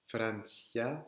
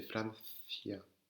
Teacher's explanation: Attention, c'est pas un s, c'est pas comme un s, c'est il y a la langue qui sort.